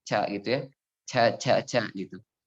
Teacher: kalau tidak kita kuatkan sifat syiddahnya, maka yang keluar jadi ca gitu ya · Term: kurang syiddah